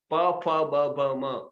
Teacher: दोनों ओठ मिला के प फ ब भ म ओष्ठ्य, तो ये ओठ से निकलते हैं